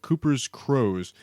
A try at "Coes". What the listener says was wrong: Cooper's Coes. Does it say crows? Yeah, the R is silent, in rooster.